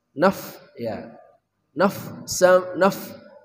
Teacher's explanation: Kedua buah gigi seri atas menyentuh bibir bawah.